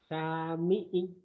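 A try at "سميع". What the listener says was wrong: Yang panjangnya mana Pak? Nah boleh juga penekanan tapi nggak usah bentak-bentak karena Bapak udah penekanannya udah bagus.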